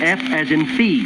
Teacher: F is made by driving the breath out between the lower lip and upper teeth.